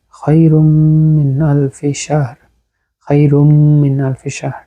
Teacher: নুন সাকিনের পরে তানবিনের পরে, এখানে রায়ের উপর দুই পেশ আছে, তানবিনের পরে মিম আসছে, যেটা হচ্ছে ইদগাম, ইদগামে মাল গুন্না